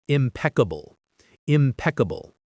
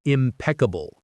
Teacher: The stress is on the second syllable, impeccable.